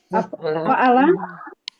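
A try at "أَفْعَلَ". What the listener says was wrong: Af'ala. Depannya ada alifnya, Bu.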